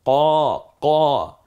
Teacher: কফ, কাফ, নুক্তাওয়ালা যে কফ আমরা দেখতে পাচ্ছি স্পষ্ট, এটা হচ্ছে কফ। জিব্বার একেবারে গোড়া থেকে, যেমন কাক ডাকে না